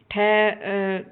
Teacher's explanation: ठह जो है यह मूर्धन्य है, अघोष है और महाप्राण है